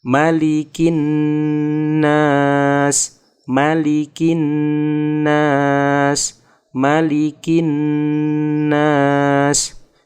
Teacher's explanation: Bertemu lagi dengan nun tasydid, bacaan gunnah harus ditahan dan didengungkan